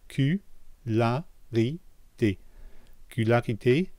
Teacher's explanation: for the C-U, I'm not saying Q. There's no Y sound there.